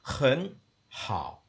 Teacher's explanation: So the throat is actually closing up and pulling it up, which is where the rising tone originally came from. The shang was the throat closing with a glottal stop at the end. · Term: third tone